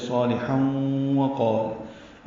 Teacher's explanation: لام باریک ہے، ہا بھی باریک ہے، اور تنوین کے بعد واو آنے کی وجہ سے صالحا وقال ادغام ہے. یہ ادغام غننے کے ساتھ ہے. وقال میں قاف پر اور یہ الف مدہ ہے، 2 حرکات لمبا ہے.